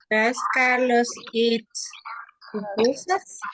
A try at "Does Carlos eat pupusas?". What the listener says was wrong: Okay, there you are, correct.